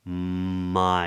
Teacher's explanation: So off the top of voiced V, of my, lips come together, my, and we get this lovely open diphthong. I, tongue starts low and comes up.